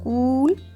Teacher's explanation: Double O in cool so we have long ooh sound